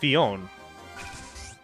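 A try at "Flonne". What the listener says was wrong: Blown. It's an L, not an I.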